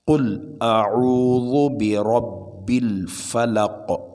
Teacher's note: یہاں میں نے پڑھا، دیکھیے پڑھتا ہوں، قل اعوذ برب الفلق، آخر میں قاف ہے، قاف پر جزم ہوگا تو قلقلہ ہوگا